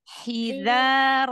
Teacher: bersihkan lagi h-nya dari tengah tenggorokan